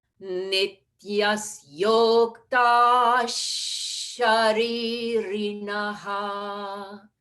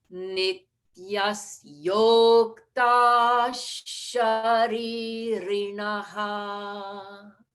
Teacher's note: So I blended visarga with the sha.